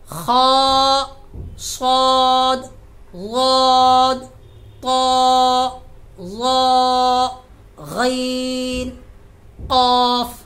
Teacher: 7 हरूफ ऐसे हैं जो हमेशा पुर होते हैं, यानी मोटी आवाज से पढ़े जाते हैं